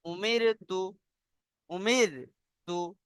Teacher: রটা বারিক হবে, অর্থাৎ মুখ খুলে পড়তে হবে খোলা আওয়াজ দিয়ে। যেমন উমির তু, উমির তু।